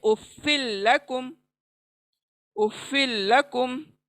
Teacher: next उफ़्फ़िल्लकुम, यहाँ पर दो अल्फाज आए हैं, उफ़्फ़िन क्योंकि तनवीन है, उफ़्फ़िन और लकुम, तो उफ़्फ़िल्लकुम, तो हमारी तनवीन चली जाएगी, नून की आवाज़ चली जाएगी, तो लाम पे हम मिलाकर पढ़ेंगे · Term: लाम का इदगाम